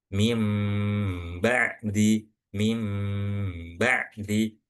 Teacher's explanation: Jadi di sini yang perlu diperhatikan adalah ee harus dibaca dengung. Kemudian pas dengung itu posisi mulut seperti mengucapkan huruf mim dan ditahan juga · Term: iqlab